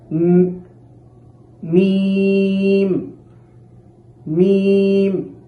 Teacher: মিম হচ্ছে দুই ঠোঁটের শুকনা অংশ থেকে অর্থাৎ বা মাখরাজ থেকে একটু সামনের দিকে মিম মিম এখানে শুকনা অংশ বলতে এইভাবে খুব চাপ দিয়ে মিম